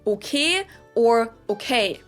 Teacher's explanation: pronounce your vowels more like just one letter just one sound straighter as I like to describe it we do use the word okay a lot in German for example but instead of saying okay like in English we tend to say something like Okay.